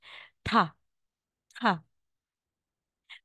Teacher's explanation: po na nilagay sa gitna o na po parang letter e Sa atin magiging ta po yung sound niya ta na may hangin